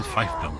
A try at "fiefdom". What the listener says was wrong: Technically, it's pronounced fiefdom. It's a fief, not a fife. You pronounce the second vowel, ladies and gentlemen.